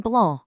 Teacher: Then there's the big open a sound which you hear in blah. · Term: big open ah sound